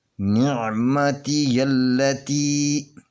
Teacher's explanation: یہ لام جو ہے یہ ڈبل پڑھی جائے گی، یہ لام ڈبل پڑھی جائے گی، اس کے اوپر تین کنگر والی شد ہے تو اپنے مخرج میں یہ سختی سے پڑھی جائے گی۔